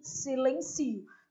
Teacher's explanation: Portanto, a palavra é polissílaba. E ela é paroxítona. A sílaba tônica é o si, silencio. Não é silêncio, né?